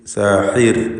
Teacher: കൈദു സാഹിർ, സാഹിർ എന്ന് നേർപ്പിച്ചുകൊണ്ട് റാഇന് ഉച്ചരിക്കുക. സാഹിർ എന്ന് പറയുമ്പോൾ ഹ തൊണ്ടയുടെ മധ്യമാണ് അതിൻ്റെ മഖ്റജ്